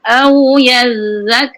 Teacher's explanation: zal yang pertama alir sedikit, tahan tapi mengalir suaranya